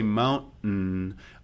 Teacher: I'm just saying it with a glottal element that's getting a nasal release on it.